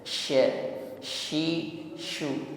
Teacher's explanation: syin yang titik tiga ini nafas atau anginnya meluas intisyar menyebar di dalam mulut kita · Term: tafasi